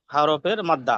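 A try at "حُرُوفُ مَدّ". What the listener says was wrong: হুরুফে মাদ্দা, হরফে নয়, হুরুফে মাদ্দা।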